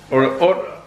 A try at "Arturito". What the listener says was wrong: Arturito. Arturito. Why can't you roll your R's?